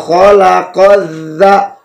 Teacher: dha bertasydid, maka qaf langsung ditekan kepada huruf za